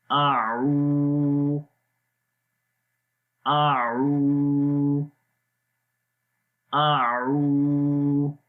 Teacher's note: اعو، آ کی آواز سمپل رہے گی، آ لمبا نہیں کریں گے۔ عو، عین کی آواز گلے کے درمیان والے حصے سے اور لمبا بھی کریں گے